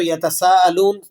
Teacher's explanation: وقف کریں گے تو یتساءلون، نون کو ساکن کر دیں گے